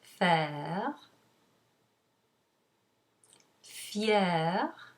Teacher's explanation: a word that has only one syllable that ends in er you pronounce er so it's the e sound and normally you would use the fricative phone for the r which is the lighter one